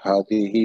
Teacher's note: پھر ہادی ہی میں ہا پہ کھڑا زبر ہے تو اس کو ایک الف کے برابر کھینچ کے پڑھیں گے